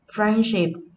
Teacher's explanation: là danh từ có hai âm tiết trọng âm rơi vào âm Tiết đầu tiên